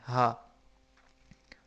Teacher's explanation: حلق کے آخر سے جو سینے کی طرف ہے، حلق کے آخر سے جو سینے کی طرف ہے، جہاں سے ہمارا سینہ شروع ہوتا ہے وہاں پہ ہاتھ رکھیں تو ہا بولیں. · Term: موٹا ہا